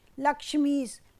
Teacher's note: लक्ष्मी का अंतिम वर्ण ई और ईश का प्रथम वर्ण ई, तो दोनों के योग से क्या हुआ, ई, जो दीर्घ है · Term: दीर्घ ई